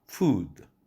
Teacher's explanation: 긴장 모음으로 우 발음을 하면 길어지며 또한 입 모양이 사람의 인체 얼굴에 옆에서 쳐다볼 때 두 입술이 쭉 내밀은 상태가 되죠